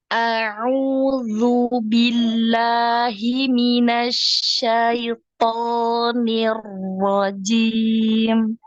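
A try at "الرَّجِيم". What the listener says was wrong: Nirrojim. Hati-hati jimnya berdecak ya, ada decaknya. Nirrojim. Jaju agak ke belakang lagi ya. Tengah lidahnya agak ke belakang lagi. Ju ya. Jadi tidak ada decak ya. Tidak ada. Nah, bunyi yang seperti itu ya.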